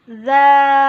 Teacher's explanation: Hukum bacaan disebut mat wajib mutasil adalah apabila ada mat tobi'i bertemu dengan hamzah di dalam satu kata. Cara membacanya wajib dipanjangkan sampai 2,5 alif atau 5 harokat atau 2,5 kali panjang mat tobi'i.